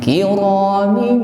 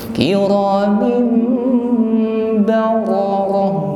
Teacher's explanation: kasrah tanwin min bertemu huruf ba, maka di sini ada hukum iqlab. Maka min kita rubah menjadi mim. Kiramin dengan berdengung.